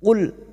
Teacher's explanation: ya lam sukun cukup masuk tanpa dipantulkan